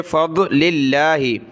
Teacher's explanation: لفظ اللہ سے پہلے لام پر زیر لفظ اللہ کو باریک پڑھیں گے